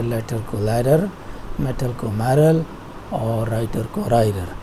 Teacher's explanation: चूँकि ज़बान बार बार लगती है आपके एल्वियोलर रिज के साथ, तो इस वजह से ये टैप या फ्लैप कहलाता है